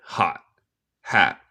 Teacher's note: Y por los dos, porque la terminación es un T, en mi acento estadounidense, hacemos lo que se llama un glottal stop en vez de decir el T. So, básicamente yo como el T.